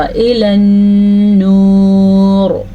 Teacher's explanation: نون کے اوپر شد آنے کی وجہ سے نون پہ غنہ ہوگا